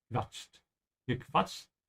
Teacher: The Q is sort of a slight V here, yeah? Quatscht.